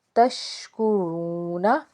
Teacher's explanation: شین زبر تش، کاف پیش کو، تشکو، را واو پیش رو، واو ساکن سے پیچھے پیش ہے تو ایک الف کے برابر ایک تو اس کو کھینچ کے ادا کریں گے، اور را کے اوپر پیش نظر آ رہی ہے تو را کو ہم نے پر پڑھنا ہے